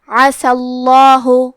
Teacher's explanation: کیونکہ سین پہ زبر ہے تو ہم لفظ الجلالہ کے لام کو موٹی آواز میں پڑھیں گے